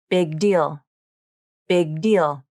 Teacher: This happens in a phrase like big deal. Native speakers typically hold the G in big. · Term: unreleased consonant